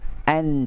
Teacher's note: Dia hujung lidah yang menekan kat belakang gigi kacip tu. An, tapi dia ke dalam belakang sikit. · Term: huruf nun